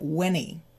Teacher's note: The N from when moves to the E, and we get whenny.